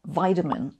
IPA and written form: ˈvaɪtəmɪn (vitamin)